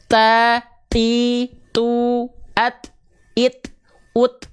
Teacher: Ya, ada percikan nafasnya.